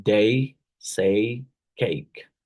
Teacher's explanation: starts with a closed mid front unrounded vowel sounds like e and Glides to a near Clos pront unrounded